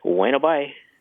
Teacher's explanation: So it's bueno bye with the B barely pronounced, right? Pronounced like a W?